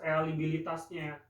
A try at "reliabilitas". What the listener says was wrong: relia itu kan putusan lah, itu bukan real. Reliabilitas, relia bukan real. Relia.